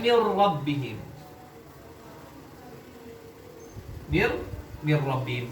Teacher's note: Ro lebih kuat secara karakter dari nun. Peleburannya sempurna. · Melebur secara sempurna sehingga nunnya itu tidak terbaca baik secara makhraj maupun sifat gunnahnya. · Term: idgham kamil